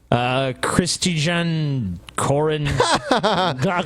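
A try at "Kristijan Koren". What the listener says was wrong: No, it's Christian. The J is pronounced like a Y.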